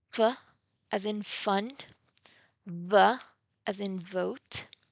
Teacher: They are called counterparts because they share some characteristics like the place of articulation, the manner of articulation, but the difference is in voicing